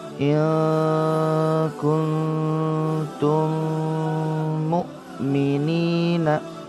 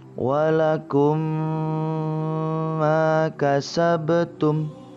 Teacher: Idgham mimi adalah apabila mim sukun atau mim mati bertemu dengan mim sejenis. Cara membacanya adalah seperti menyuarakan mim rangkap atau ditasydidkan dan wajib dibaca dengung.